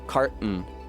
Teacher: in carton you say car and then you shut your throat before you come with the n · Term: glottal stop